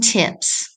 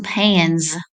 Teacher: If suffix s follows an unvoiced consonant, the s is unvoiced, as in tips. If suffix s follows a voiced consonant, the s is voiced, as in pans.